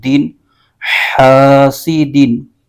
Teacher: دال کے نیچے دو زیر ہے اور یہ تنوین ہے، تو اس کو تنوین کے لحاظ سے پڑھیں گے، یعنی آخر میں نون ساکن کی آواز آئے گی۔ تو اس کے ہجے یوں کریں گے، حا الف زبر حا، سین زیر سی، حاسی، دال دو زیر دن، حاسدین۔